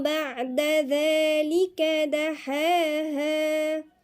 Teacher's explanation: الذال هنا من الحروف اللثوية مرققة، وبعدين في ألف صغيرة مد طبيعي مقدار حركتين.